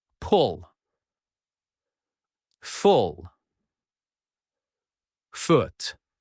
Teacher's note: This sound is short and a little soft. Your lips are a little round. You say it quickly. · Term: short ooh